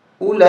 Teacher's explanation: کھڑا مزبر لا، اولا حمزہ زیر ای، کاف زبر کا، اولائک، یہ 4 الف تک ہمیں کھینچنا ہے، یہ مد متصل ہے اور اس واو کو نہیں پڑھیں گے۔ اولائک، ہا پیش ہو،